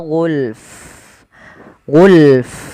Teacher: alirkan nafasnya ketika Fa karena Fa salah satu sifatnya Hamas · jangan cuman gul, tapi fa-nya juga ikut mati ketika kita waqaf